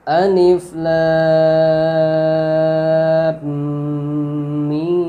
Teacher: Mimnya dibaca gunnah karena mimnya bertasdid